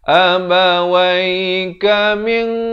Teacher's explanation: disamarkan dua harakat ikhfa hakiki, tapi dibacakan dengan tebal kerana qaf merupakan huruf isti'la.